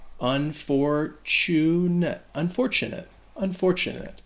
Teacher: real disadvantage next unfortunate so this word can be troublesome because that tu actually sounds like a chew